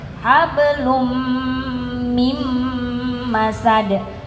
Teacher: tanwin jumpa mim itu idghamunah didengungkan dulu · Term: idgham bi gunnah